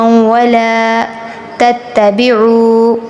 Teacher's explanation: واو کے پیچھے پیش آیا، کھینچ کر پڑھیں گے، حرف مدہ آ گیا